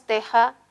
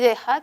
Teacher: la distinción se establece por el estado de las cuerdas vocales esto significa que un sonido es sordo y el otro es sonoro